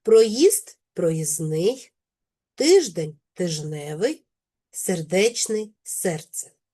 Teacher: Спрощується середній приголосний д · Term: спрощення